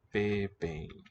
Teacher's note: the M is not really a M, it's it's an incompletely sealed nasal